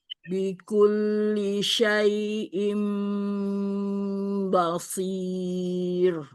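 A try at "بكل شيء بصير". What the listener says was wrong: Banyak jangan ikut tebal basir.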